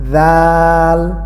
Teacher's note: জাল নরম করে উচ্চারণ করতে হবে। জিহ্বার আগা এবং সামনের দাঁতের আগা।